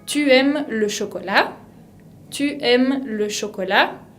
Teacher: Ahora, si tengo una pregunta, una interrogación, uso al contrario un tono ascendente. Ascendente, que se puede decir también agudo, aigu.